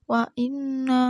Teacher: nunnya ini namanya hunnah karena ada nun yang bertasjid